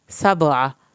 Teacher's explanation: سبع، با کا کلکلا ہوگا، عین حلق سے پڑھا جائے گا، عین کی زبر کو نہیں لمبا کرنا